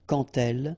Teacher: when you will have this d, you will phonetically pronounce it like t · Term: liaison